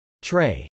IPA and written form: trˈeɪ (trey)